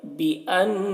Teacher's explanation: بأن، نون مشدد غنہ کریں گے